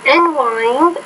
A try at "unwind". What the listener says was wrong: Okay, I think it's a stress thing. You can unwind. You can unwind. I guess unwind. You can unwind, right? So I think the stress there should be on that second syllable of that word, not the first one. So that's a word stress issue.